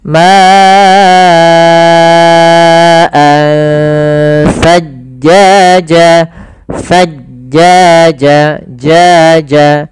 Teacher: Maka ma'an sajjaja, pada lafal ansa di sini ada ikhfa, yaitu adanya tanwin bertemu dengan huruf sa, yang mana ikhfa itu kan ada hurufnya ada 15, salah satunya adalah sa dan zai tadi di awal. Maka cara membacanya langsung samar ke sa, ma'an sajjaja, sajjaja, jaja.